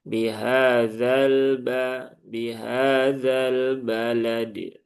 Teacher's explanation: lam tidak punya sifat rokhawah. Sifatnya adalah tawasub. Ya, maka alirkan sedikit